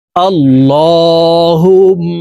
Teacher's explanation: আল্লাহুম্মা, এই আল এখানে এই লামকে ল বলে উচ্চারণ করতে হবে, কারণ আল্লাহ শব্দের আগের হরফে জবর আছে, এই কারণে এই লামকে ল অর্থাৎ মোটা ভাবে পড়তে হবে। আল্লাহুম্মা, এই হা তাসদীদওয়ালা মিমের সাথে নাকের বাসি থেকে গুন্নাহ করে পড়ব।